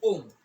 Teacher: प्लुप्त गेयम, विलुप्त जो संस्कृत में विलुप्त को त्रिमात्रिक स्वर की श्रेणी में रखा गया है। इसके उच्चारण में 3 मात्रा का समय लगता है। जैसे ओम, हम किसी का संबोधन करते हैं, ओम, लंबा किसी को खींचते हैं, उसको ही विलुप्त स्वर कहा जाता है।